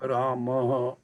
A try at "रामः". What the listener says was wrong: है ना, हाँ पे जोर नहीं देना है, म पे जोर देना है। विसर्ग की खासियत होती है जिस अक्षर के साथ जुड़ी होती है विसर्ग, ये भी इसको हम विसर्ग बोलते हैं बिंदियों को। तो विसर्ग जिस भी अक्षर के साथ जोड़ते हैं हम उस अक्षर को जोर दे के बोलते हैं, ना कि विसर्ग को जोर देना है।